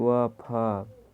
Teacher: दंत ओष्ठ है, इन वर्णों का उच्चारण में ऊपर के दांत व नीचे के होठ का प्रयोग किया जाता है, जैसे व, फ।